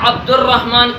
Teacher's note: را پر تشدید ہے، را پر شد ہے، اس وجہ سے الف اور لام کو نہیں پڑھ رہے ہیں۔ یہ بھی پہچاننے کا طریقہ ہے کہ یہ حروف شمسی ہے، جو الف اور لام کے بعد جو حرف آیا ہے وہ را آیا ہے، عبد الرحمن۔